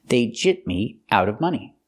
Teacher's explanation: when I link it with a consonant after jipped, it's a stop t and you don't really hear it